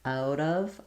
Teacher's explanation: So we don't have the O sound or the F sound here. The IPA is a schwa and a v, and most of the time it's going to be this unstressed short schwa